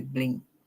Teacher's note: We hear the t sound there for the ed. We do not say blinked, or we do not say blinged.